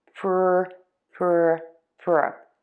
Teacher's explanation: This way, when you do that, when you get ready for that R, you don't add that extra sound after the P. It just sounds like one smooth continuation from the P to the R. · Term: PR sound